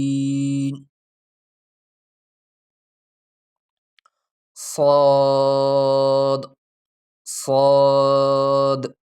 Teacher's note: سیٹی کی آواز کو تھوڑا موٹا کرنا